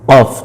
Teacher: Qaf, jadi suaranya itu terdengar di tenggorokan.